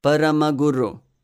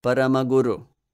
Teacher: all short vowels all are lagoos or light syllables you can hear that nothing is really stressed